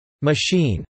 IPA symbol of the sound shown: i